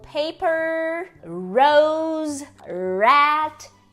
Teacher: o nosso R retroflexo que é o r do interior